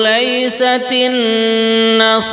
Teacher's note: Nun bertasdid kita dengungkan dua harakat